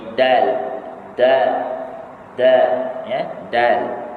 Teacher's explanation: Bila kita nak sebut huruf dal, dia tertahan daripada terlepas sebutannya.